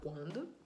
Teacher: Esse UA é um ditongo crescente, né? O U é semivogal e o A é vogal. Não tem dígrafo nesse QU, porque você não fala quando, você fala quando.